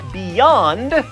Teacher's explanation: So when you speak a vowel, it involves an unrestricted flow of air, and when you say words like beyond, you actually use your tongue up there at the roof of the mouth for the Y, so that is not a vowel. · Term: consonant